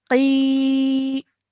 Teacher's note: Now over here you can see that this here in blue is a ya mud because it's a ya sakin and the letter previous to it has a kasra. So we're elongating the sound out of qi for 2 seconds.